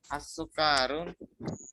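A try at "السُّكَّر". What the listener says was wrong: as-sukkaru, kayaknya pendek. Di tasdid kafnya as-sukkaru.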